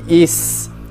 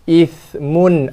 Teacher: sedangkan tha tak ada desir dan makhrajnya atas hujung lidah, sentuh gigi atas, gigi gunting atas